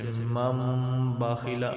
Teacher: ہم ادغام غنہ ہوگا یہاں پہ، اور اس کے ساتھ آگے نون ساکن کے بعد با آ جائے تو یہاں پر بھی غنہ ہوگا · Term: اقلاب